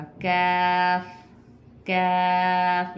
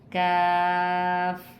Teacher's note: ज़बान की जड़ से काफ अदा होगा